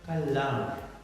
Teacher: in American, the R sound is spoken clearly, and in Britain, it is omitted.